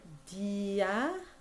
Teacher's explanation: The E sound that you hear, dia, is very quick and you think of it as a consonant. Don't think of it as a vowel.